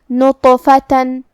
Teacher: کلمت نطفتن میں یہاں تو ہے، تا حروف التفخیم میں سے ہے، لہذا ہمیں یہ حرف کو موٹی آواز میں پڑھنا ہے جو کہ اس پہ جزم ہے.